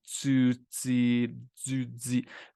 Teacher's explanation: Il y a l'affrication avec le son tu, ti, du, di